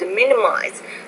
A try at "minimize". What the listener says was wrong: The Z, you have to pronounce with a little more vibration. For example, the word blowers or miles. But when you're speaking quickly, we don't do it as clearly as that, but just be careful about the Z consonant sound.